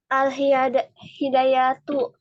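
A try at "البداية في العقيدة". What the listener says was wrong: Bidayah, bukan hidayah, tapi bidayah. Al-Bidayatu. Coba ulang.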